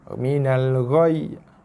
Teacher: Okey, boleh Ra tekan pada ya sebab ya bersabdu. Yi tak bunyi kerana kita sukunkan dia, kita matikan dia kerana waqaf.